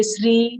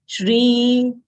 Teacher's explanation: there is palatal sh over here with full Ra